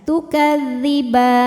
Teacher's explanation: Maka baknya ini panjang, boleh 2 atau 4 atau 6 harokat asal konsisten dalam sekali baca. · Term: mad arid li sukun